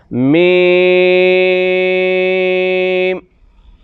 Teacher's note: 5 الف لمبا کریں گے، پھر ہونٹ بند کر دیں گے۔ میم، ہونٹوں کا اندر والا حصہ جو ہر وقت گلا رہتا ہے اس جگہ سے ادا ہوگا۔